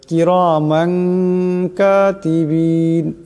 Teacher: জবরের তনবিন এরপর কাফ আসছে কাফ ইকফার হরফ এখানে দেখেন গতিকে এই তনবিনকে গুন্না করিয়া পড়তে হবে নাকের ভিতরে লুকায়া পড়তে হবে